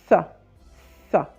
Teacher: Ça sort avec le bout de la langue, ça, avec les dents supérieures